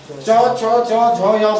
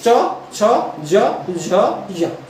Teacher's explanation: जीभ का जो आगे वाला हिस्सा है हल्का सा क्या हो जाएगा, नीचे को हो जाएगा। ये दांत के पीछे मसूड़ी में लगेगा।